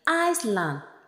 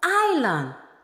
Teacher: le S de notre mot est muet